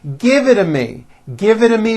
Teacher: because the t's fall between two vowel sounds if you remember in American pronunciation when T's fall between two vowels they become voiced and are pronounced as D's